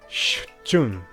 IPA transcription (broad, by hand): ɕu̥'tɕun